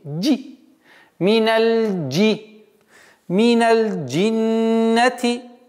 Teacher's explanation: В арабском языке нет звука ж. Есть звук джим.